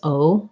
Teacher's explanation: it's a diphthong in american english says o hold it a little longer